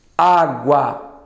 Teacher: Tapei o nariz, não alterou. Por quê? Porque eu não preciso da via aérea superior para completar esse som. Então ele é oral.